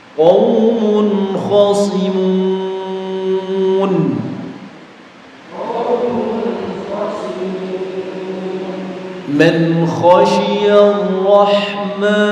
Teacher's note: Kemudian huruf yang terakhir dari Huruf-huruf yang masuk kategori bacaan idhar halki adalah huruf kha. Ketika ada nun sukun atau tanwin bertemu dengan huruf kha, maka dibaca jelas tanpa ditahan dan tanpa dijeda ya.